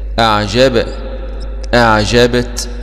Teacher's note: تاء سكون مع الهمس، لأن التاء من حروف الهمس